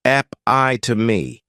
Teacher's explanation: when you see it many times people may mispronounce it because the third syllable has that schah and the last syllable is that long e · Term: schwa